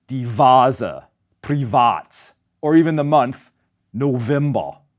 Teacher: The V in these borrowed words is pronounced as a voiced V, just like German W